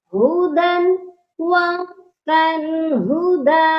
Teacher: وقف کرتے وقت ایک الف جتنا اس کو ہم لمبا کر کے پڑھ رہے ہیں